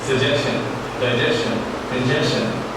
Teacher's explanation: सजेशन, डाइजेशन, कंजेशन हम च नहीं श की आवाज से ही बोलते हैं।